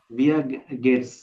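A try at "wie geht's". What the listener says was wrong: ভিয়ার না, ভি গেটস। ভি।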